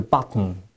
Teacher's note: it's more glottal and more more nasalized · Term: the glottal t, glottal T